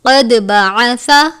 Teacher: دال پر قلقلہ کرتے ہیں، سا کو نرمی سے پڑھتے ہیں